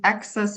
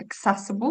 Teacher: So we've got access on the first syllable, and here it's on the second. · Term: stress changes